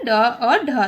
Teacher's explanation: हमारा जो जीभ है पहले ऊपर जाता है और झटके के साथ नीचे आता है, तो उसे बोलते हैं उच्छिप्त वर्ण।